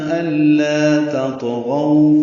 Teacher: تطغوا میں تا باریک ہے، طا پر ہے، طا ساکن پہ قلقلہ ہے. تطغوا، غو غولین ہے، ہونٹوں کو نا تمام گول کریں گے، آگے لائیں گے.